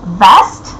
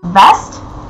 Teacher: one of the things that people make fun of when speaking about russian accent is our inability to tell apart the v and w